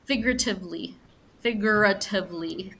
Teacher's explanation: a little trick between the G and the r figuratively figuratively it's almost like you don't pronounce the U